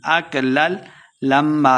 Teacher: اکلل لام زبر لام لل، اکلل لما میم شدہ غنہ کے ساتھ پڑھیں گے